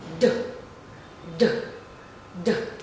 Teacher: So you can feel the tremor on your throat. So that means that this is voiced.